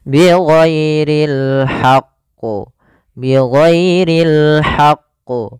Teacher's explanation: Tapi di sini karena dia ada huruf tasydidnya, ditekan dulu qafnya baru ditasydidkan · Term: qalqalah kubra